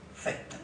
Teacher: No pronunciamos una S, cesta, sino un soplo expiratorio, cesta.